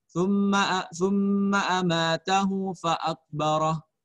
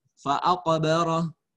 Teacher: Qalqalahnya kecil ya. Karena dia hukumnya qalqalah sugra.